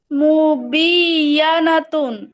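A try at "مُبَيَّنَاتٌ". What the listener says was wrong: খুব বায়ে জবর আছে।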